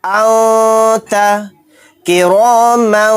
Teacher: پھر ہم آیتوں کے اندر دیکھیں گے کہ تنوین یا نون ساکن کے بعد اگر 15 حروف میں سے کوئی حرف آ جاتا ہے تو اخفاء کا قاعدہ ہوگا، اور اخفاء کا ساؤنڈ یعنی نون کی اور تنوین کی آواز کو ناک میں چھپا کر اس طرح نکالیں گے